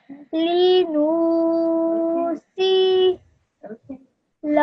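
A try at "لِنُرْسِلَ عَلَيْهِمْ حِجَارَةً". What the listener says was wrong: So again, this noon, it's way too long. Linursila.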